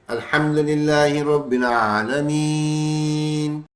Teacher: حروف مدہ ہے، اس کے ساتھ ایک ساکن حرف ہے اور آگے وقف ہو رہا ہے تو یہ 4 حرف کھینچتے ہیں